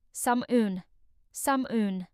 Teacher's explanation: But in British English, the L is silent. The word is pronounced as Salmon, with a smooth A sound at the start.